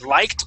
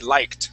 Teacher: good job with your Ed ending there okay that does sound like a t